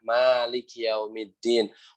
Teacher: pertama mimnya 2 harokat harus panjang ya